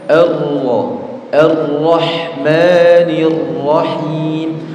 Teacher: orang itu membaca ro tapi getarannya lebih dari dua getaran